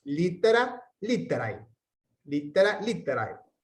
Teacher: Cuando tenemos AE al final, como es siempre un diptongo, o sea, se pronuncian juntas las vocales, no agregamos una sílaba a la palabra, sino que tienen la misma cantidad de sílabas.